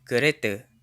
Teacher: Final a is usually pronounced as a schwa in Malay, at least in Malaysia.